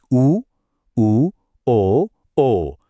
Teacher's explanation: उ ओ ओ महसूस हुआ। हर बार होंठ अपने आप गोल हो गए। · यह वो स्वर हैं जिनको बोलते ही हमारे होंठ गोल हो जाते हैं। एकदम सर्कल की तरह। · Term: वृत्त मुखी